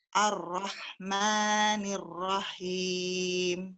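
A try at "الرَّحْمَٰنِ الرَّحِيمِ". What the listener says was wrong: Kembali lagi matnya, tolong disempurnakan Bu. Maknya hanya 2 saja. Ar-Rahmanir-Rahim. Maknya 2 aja.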